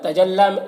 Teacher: تجلا لام میں کھڑا زبر ہے، اسے ایک الف کے برابر کھینچیں گے.